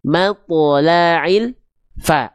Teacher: Antara el dengan fa nggak boleh ada jeda hening di sana. Ya, nggak boleh ada terputus atau tertahan bunyi el-nya. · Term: lam sukunya, lam sukunnya